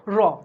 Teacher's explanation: কম্পনজাত ধ্বনি হচ্ছে র ধ্বনি। উচ্চারণের সময় জিহ্বার অগ্রভাগ কম্পিত হয় বা কাঁপে এবং দন্তমূলের কয়েকবার আঘাত করে র উচ্চারিত হয়।